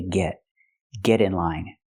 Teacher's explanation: we hear the pronunciation of T change to a fast D because it's between vowels